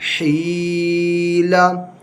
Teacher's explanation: اس میں یہ یا مدہ ہے اس کو ایک الف کے برابر کھینچ کر پڑھیں گے